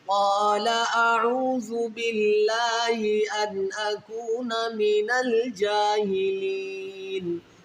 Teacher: لفظ اللہ کے لام سے پہلے زیر ہے، تو لفظ اللہ کے لام کو باریک پڑھیں گے، اس کو موٹا نہیں پڑھیں گے۔ باللہ ان پہ غنہ کیوں نہیں ہو رہا، یہاں پر نون ساکن کے بعد حروف حلقی میں حمزہ ہے آگے، ٹھیک ہے، نون ساکن کے بعد حروف حلقی میں حمزہ ہے، تو اس لیے یہاں پر غنہ نہیں کریں گے، یہاں پر اظہار کیا جائے گا۔